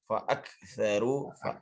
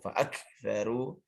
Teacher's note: Hamas pada kaf itu bukan untuk dipantulkan fa'aksaru, tapi dia lepas keluar, tidak ada kembali ke dalam.